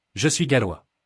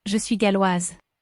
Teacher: The S at the end of the masculine gallois is not heard. However, the S in the feminine galloise is heard because it has an E after it.